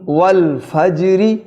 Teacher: یہاں جیم ساکن ہے تو قلقلہ ہوگا